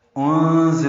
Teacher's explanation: انزل میں نون ساکن کے بعد زا آنے کی وجہ سے اخفا ہے، زا تیز صفیر کی آواز سے نکالیں گے